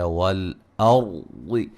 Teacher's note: را ساکن سے پہلے زبر را کو موٹا ادا کریں گے